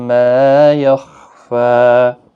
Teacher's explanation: मा अलिफ मद्दा है, वक़फ़ की सूरत में भी एक अलिफ की मिकदार के बराबर खींच कर पढ़ेंगे।